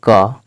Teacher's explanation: क बोलने पर आवाज कहां से निकल रही है कंठ से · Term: कंठ वर्ण